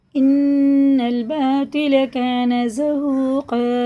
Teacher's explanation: تو تا کا ایک ہی مخرج ہوتا ہے، لیکن تو پر ہوتا ہے، تا باریک ہوتا ہے